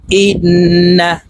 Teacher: হামজা নুন জের ইন, ওয়াজিব গুন্না, হরকতের বামে নুনের উপরে তাসদিদ আছে, তো এই হামজা নুনের সাথে গুন্নার সহিত পড়ব, নাকের বাসি থেকে গুন্না করতে হবে।